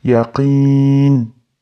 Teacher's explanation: Ixtiyoriy cho'zamiz. Yaqini deb oxirida to'xtayotganda qalqala berib qo'ymaylik, e'tibor beraylik.